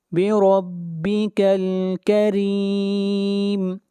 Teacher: را کو باریک پڑھیں گے اور را کے نیچے زیر ہے۔ جہاں بھی را کے اوپر زبر یا پیش ہوگی را کو موٹا پڑھیں گے اور جہاں پہ زیر ہوگی وہاں پر را کو باریک پڑھا جائے گا۔